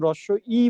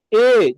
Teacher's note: দেখেন, আমরা যখন এই বর্ণগুলো উচ্চারণ করি, যেমন যখন রস্য ই বলি, রস্য ই, দেখবেন আমাদের জিহ্বাটা মুখের সামনে চলে আসবে। রস্য ই, জিহ্বার সামনে। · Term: সম্মুখ